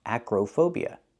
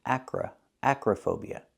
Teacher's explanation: the O in the middle is pronounced with a short uh sound like cup and up Acra relaxed and closed uhuh Acra acrophobia is the correct pronunciation